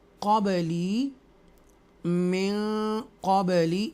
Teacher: क़बली में क़बली, यहाँ पर भी हम इक्फ़ा करेंगे, नाक में आवाज़ लेके जाएंगे, नसलाइजेशन में